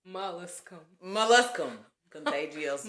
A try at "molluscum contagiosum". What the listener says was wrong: Molluscum. when you emphasize it sounds like you're saying molest. Mollusk. Like the shell, like a mollusk.